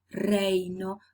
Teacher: Phonetics tells you, well, in English, there's no contact between the tip of the tongue and the back part of the alveolar ridge, while in Spanish there is contact, and in the case of reino, the tongue touches the back part of the alveolar ridge many times